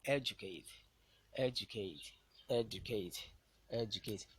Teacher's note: word stress on the antepenultimate syllable is the word educate.